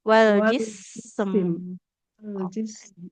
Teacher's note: Sin mengalirkan nafas dan suara huruf mim tawasut aliran suara yang pertengahan. Wal jis alirkan dulu bunyi huruf sinnya baru masuk ke mim